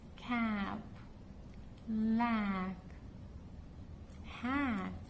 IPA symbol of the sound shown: æ